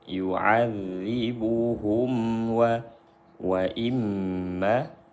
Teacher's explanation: Mim sukun berjumpa dengan waw, izhar syafawi. Dibaca jelas mimnya.